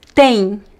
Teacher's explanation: At the end of words in Portuguese, we pronounce as the N. Tem. It's similar to the sound, the N, GN in English, not the same, but similar.